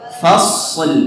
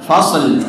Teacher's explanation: shadnya dialirkan terlebih dahulu ya. Kemudian nampakkan huruf lamnya.